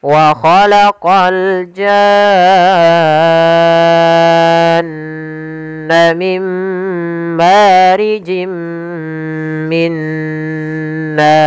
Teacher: Kemudian pada lafal nar ada mad arid di sukun. Yaitu kita boleh memanjangkan pada lafal na itu dua harakat, empat harakat ataupun enam harakat. Kemudian untuk huruf rnya dibaca ro tafkhim karena sebelumnya ee yaitu fathah.